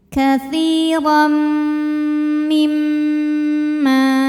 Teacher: karena tanwin fathahnya menghadapi huruf mim. Maka tanwinnya dileburkan ke mim, katsiram, jadi bunyinya M ya. Kemudian kita dengungkan, ditahan bunyi M-nya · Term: idgham bi gunnah